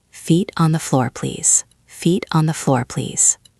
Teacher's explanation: Focus on that calm, steady tone. Don't let your voice go up at the end. Keep it flat and firm.